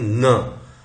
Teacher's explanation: जब हमारा soft palate नीचे आ जाता है तो हमारी जो ध्वनि है वो नाक से भी निकलती है, तो वो नेजल साउंड हो जाती है।